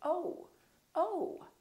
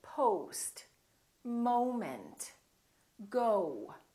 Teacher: We don't say no, we say no. So it's actually two sounds, it's O and U together. So you have to move your mouth from O to U